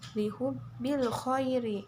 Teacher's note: ri ini hukum bacaannya tarkik atau tipis, dibacanya harus tipis